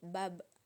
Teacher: Ketika huruf Ba dalam posisi mati, suaranya terdengar mantul